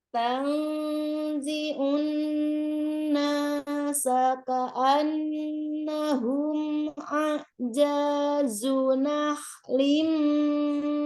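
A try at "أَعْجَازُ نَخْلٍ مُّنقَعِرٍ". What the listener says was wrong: Nah, tuh kepanjangan janya. A'jazunah limuqair. Nah, itu baru itu baru eng ya. Karena dia qaf. Sudah nun sukunnya.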